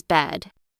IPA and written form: bɛd (bed)